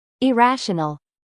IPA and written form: ɪˈræʃənl (IRRATIONAL)